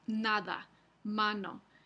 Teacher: Entonces vamos a ir al paquete aquí. Vemos que si está el fonema N en posición inicial o entre dos vocales en una palabra, utilizamos la producción alveolar